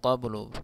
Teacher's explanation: قبل قاف کو پر پڑھیں گے اور با میں قلقلہ ہے قلقلہ کے ساتھ پڑھیں گے